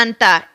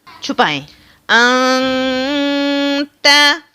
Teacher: کیا چھپانا ہے؟ ہم نے اس بیچ والے نون ساکن کو چھپانا ہے۔ کہاں پر چھپانا ہے؟ اپنی ناک کے اندر۔ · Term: اخفا